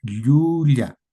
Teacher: En la que la lengua choca con el paladar, ya, y el aire sale por los costados de la lengua, ya, ya. Hay un contacto del paladar con la parte media de la lengua. Entonces hay que pronunciarla así en el quechua, yuya. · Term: doble L